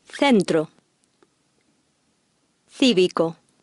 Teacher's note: In Spain, the C followed by an E or I makes a TH sound.